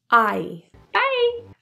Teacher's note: the vowel in by is actually a D thong so two vowels are strung together and linked